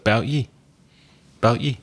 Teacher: So we get rid of the word how. The word about, we drop the first letter A